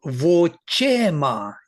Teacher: So vochema, the stress is on che, and ma is, you see, it is svarita, vo is anudatta, and che is udatta.